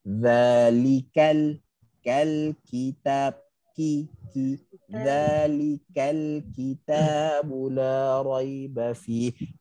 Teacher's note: Kaf bila dia berbaris, maka hilangkan angin dia. Minimumkan angin dia.